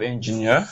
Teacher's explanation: Okay, so we have engineer. So EER, so the stress is on the EER